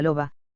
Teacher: los labios sólo se aproximan sin llegar a juntarse por lo que el aire fluye